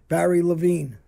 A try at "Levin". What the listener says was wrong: It's Levin. There's no E at the end.